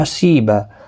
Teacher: سی یا مدہ ہے اور ایک الف کی مقدار کے برابر کھینچنا ہوگا، اور یہاں پر وقف بالابدال ہوگا، دو زبر کو بدل کر ایک زبر کے ساتھ وقف کریں گے، الف مدہ بنے گا، با مد کے ساتھ وقف کرنا ہے۔